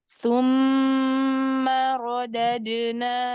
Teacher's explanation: Tsumma radadnahu asfala safilin. Nah, huruf mim tasydidnya di gunnah, tapi suaranya nggak naik